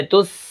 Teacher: اب اس کے بعد آپ دیکھیں جزم ہے سین کے اوپر، سین جو ہے پیچھے والے حرف کے ساتھ مل کر پڑھی جائے گی، اور سین کے اندر سیٹی بھی ہوگی